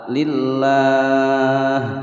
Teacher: lafadz jalalah dibaca tipis dengan suara lah, lillah, karena kita berhenti boleh panjang 2 sampai 6 harokat.